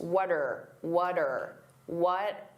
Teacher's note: What are can combine together and that R can sound very reduced.